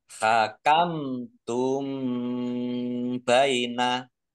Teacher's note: mim sukun bertemu dengan huruf tak, bacaan izhar safawi dibaca jelas.